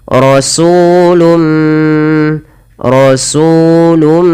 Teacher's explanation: suara nunnya dimasukkan kepada huruf mim dan diganti dan dihilangkan maka hukum tajwidnya dinamakan dengan Idgham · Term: idgham bi gunnah